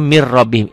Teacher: idgham bilagunnah idgham tanpa dengung tanpa ditahan